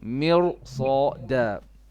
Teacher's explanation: Yes, for everyone's benefit, this is one of the four exceptions. Although we have a kasra before the ra, but because of the sad is a heavy letter, we will have to make ra heavy.